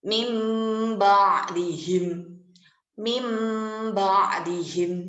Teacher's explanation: Jadi huruf nun sukunnya itu hilang, dileburkan menjadi mim.